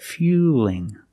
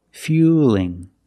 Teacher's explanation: the light L is straighter